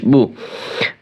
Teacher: পেশের উচ্চারণ করার সময় দুই ঠোঁট গোল করে মাঝখানে ফাঁকা রেখে হালকা শক্ত করে উচ্চারণ করতে হবে